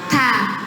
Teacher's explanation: Toroful lisan bersentuhan dengan gusi gigi seri bagian atas.